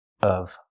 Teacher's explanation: You can say it like that, or you can pronounce the v sound. But keep the vowel short and closed. Of. I'm not a fan of baseball.